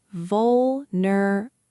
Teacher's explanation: So now I'm listening for stress. I think the strong part is first.